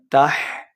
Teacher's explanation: ہا کو ہم نے حلق کے درمیان والے حصے سے ادا کرنا ہے